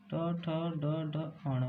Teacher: ट, ठ, ड, ढ, अण मूर्धन्य से बोले जाते हैं